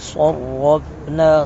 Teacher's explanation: اور را کو بھی پر کر کے پڑھیں گے وَلَقَدْ صَرَّفْنَا صاد کو پر کر کے پڑھیں گے را کو پر کر کے پڑھیں گے